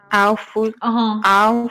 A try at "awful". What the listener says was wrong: این اشتباهه. او نیست نه. awful. فکر کنم با این تلفظ جغد که اول هست O-W-L با اون اشتباه گرفتید. اون اول تلفظ میشه. این میشه awful.